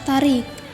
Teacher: pada kata tarik diwakili oleh alofon I tinggi bawah depan tak bundar